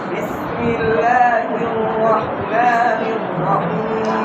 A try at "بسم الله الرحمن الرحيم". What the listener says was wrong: এখন লা কম হয়েছে, মা বেশি হয়েছে, বুঝতে পারছেন? দুটোটা টান সমান রাখতে হবে। বিসমিল্লাহির রহমানির রহিম।